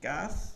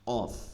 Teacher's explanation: কাফ আর কফ কাফটা চিকন কফটা ভারী